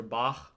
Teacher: the Achlaut, which is like in the back of the throat